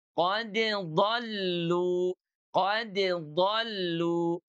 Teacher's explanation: Huruf dot makhrajnya dari pinggir lidah kita dengan gigi geraham.